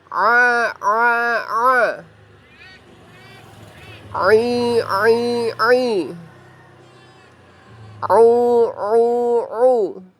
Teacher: Huruf ain di sini, huruf pertama. Huruf ain posisinya berada di tengah tenggorokan.